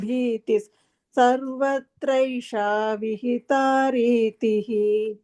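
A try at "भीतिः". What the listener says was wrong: எல்லாம் பர்ஃபெக்டா இருந்து பீதி மட்டும் அந்த பீதி மாதிரி கேட்டது. அது தப்பா இல்ல.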